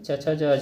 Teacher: छ का उच्चारण स्थान तालु